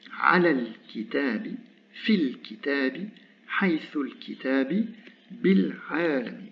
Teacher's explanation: l'article disparaît, la voyelle de liaison disparaît, mais le lam reste, puisqu'on est sur des lettres lunaires